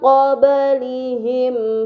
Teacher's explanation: Pada kata qablihim terdapat ba sukun, ini dinamakan qalqalah, maka harus dibaca secara memantul.